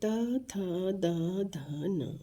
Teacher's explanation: उसके बाद त थ द ध न, ये दंत्य है। क्योंकि जब हम इनका उच्चारण करते हैं तो जो है जीवा हमारे दांतों को छूती है